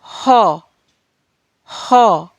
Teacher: हा का उच्चारण करते वक्त हमारी जीभ कंठ को स्पर्श कर रही है, यानी कि कंठ और जीभ के बीच घर्षण होने के कारण हा वर्ण का उच्चारण होता है।